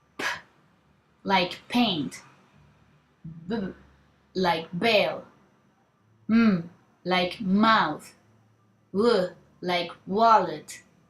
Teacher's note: Bilabial. The articulators are the two lips. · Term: bilabial consonants